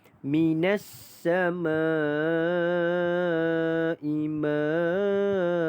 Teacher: Ma itu dipanjangkan dengan 5 harakat. Dibaca dengan panjang 5 harakat. Okey. Kerana mad asli huruf alif bertemu dengan hamzah dalam satu kalimah. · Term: mad wajib muttasil